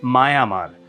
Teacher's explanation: অর্থাৎ শব্দের মধ্যে পাশাপাশি দুটো স্বরধ্বনি যদি থাকে, যখন পাশাপাশি দুটো স্বরধ্বনি আছে, যদি এ দুটো স্বর মিলে একটা যৌগিক স্বর না হয়, এ দুটো স্বর মিলে কোনো যৌগিক স্বর হচ্ছে না, তবে এ দুটো স্বরের উচ্চারণের সুবিধার জন্য একটা ব্যঞ্জন ধ্বনির মতো হয় অন্তঃস্থ অ আসবে, নয়তো অন্তঃস্থ ব আসবে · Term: অন্তঃস্থ অশ্রুতি